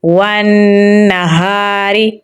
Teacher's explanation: واو کو نون کے ساتھ ملائیں گے کیونکہ نون کے اوپر تشدید ہے تو یہاں پر غنہ ہو رہا ہے تو ہم یہاں پر غنہ کریں گے۔ ہا کو گلے کے نچلے حصے سے نکالیں گے، آگے الف مدہ ہے تو اسے ہم لمبا پڑھیں گے۔ را کو باریک پڑھیں گے تو پڑھا جائے گا والنہار۔